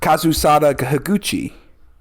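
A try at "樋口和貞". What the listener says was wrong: I think you added in a K in between both names for some reason, but I think so.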